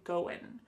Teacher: That final G in the word going is going to be cut off